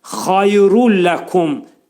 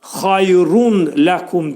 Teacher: Rundakı burada səsi ləmə dəyir və idğam bilağunna olacaq. Yəni, nun səsi ləmə çevrilir burada. Tənvin ləmə çevrilir və ağız boşluğunda deyilir. Burada idğamı elərkən gecikmək olmaz.